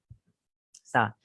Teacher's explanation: dia ada sifat hamas, ada hembusan, ada hembusan angin, ada aliran udara. Istifal, dia huruf yang rendah.